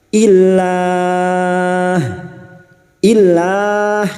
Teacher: lam jalalah didahului dengan kasrah, kita membacanya tarqiq , tipis. Illah. Illah, kami panjangkan selama empat harakat; kita berhenti di tanda wakaf qaf lam, al-waqfu aula.